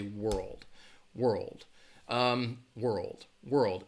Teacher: your tongue is gonna touch the top of your mouth but when you're transitioning it's very quick your tongue is actually not going to hit the top of your mouth